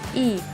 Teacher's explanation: pada bunyi ini lidah berada pada posisi depan dan dengan rahang tertutup